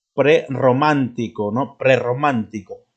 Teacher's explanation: la doble r tiene un sonido vibrante múltiple